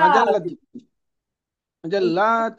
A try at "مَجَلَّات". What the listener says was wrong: বহুবচন তো সব টেনে পড়তে হবে।